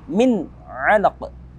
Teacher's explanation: Ada nun sukun bertemu dengan ain yang merupakan salah satu daripada 6 huruf halqi. Maka kita hukumi bacaan tersebut dengan izhar halqi.